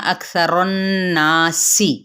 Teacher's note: غنہ کرتے ہوئے مد اصلی بالالف اور سین کی زیر کو واضح کرے. لا مد اصلی بالالف.